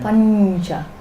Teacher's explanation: So you can't sound the full nya because it's joined to the cha. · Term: palatal nya